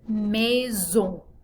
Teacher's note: we have another nasal vowel at the end of this word so that airstream should be traveling through your nose